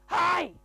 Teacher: a monster voice. You are rubbing your vocal cords together and going, hi.